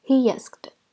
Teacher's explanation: We link the sounds with ya. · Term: link 2 vowel sounds